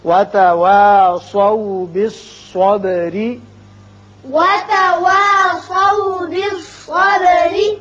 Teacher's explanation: وتواصوا سواد کو پر پڑھیے، با کی صفت قلقلہ، را باریک ہوگا اس لیے کہ نیچے زیر ہے